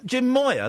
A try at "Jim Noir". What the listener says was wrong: No, Noir. You know, French. That in French. No, with an N at the beginning. Noir.